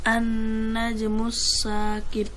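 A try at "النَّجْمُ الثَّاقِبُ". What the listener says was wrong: Bukan sin.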